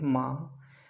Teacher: उच्चारण का स्थल मुंह और नाक दोनों से हो रहा है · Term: अनुनासिक स्वर